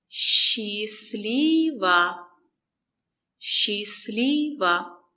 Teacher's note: The letter S and the letter Ch are pronounced as sh.